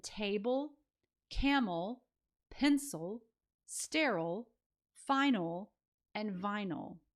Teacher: The vowel sound in that final syllable is the schwa sound, and it's kind of combined with the L a little bit, but table, you can hear that ul sound at the end.